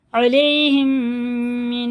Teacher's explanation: میم ساکن کے بعد اگر میم ہے تو یہ اخفا شفی ہے، غنہ کر کے